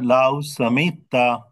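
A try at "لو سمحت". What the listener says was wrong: মিমের পরে এটা হচ্ছে হা। তো হাটা একটু গলার মধ্যে থেকে স্যার আসতে হবে। এখানে একটু সমস্যা আছে, সেটা হচ্ছে হা এবং আইন কাছাকাছি উচ্চারণ। তো আইন বললে হবে যে যদি তুমি শুনতা, এরকম অর্থে হবে। আর হা বললে হবে যে যদি তুমি করতা, হ্যাঁ, বা তুমি যদি দেখতা বিষয়টা, এরকম।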